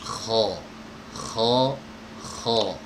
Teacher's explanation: mengangkat lidah bagian belakang keluarnya dari tenggorokan bagian atas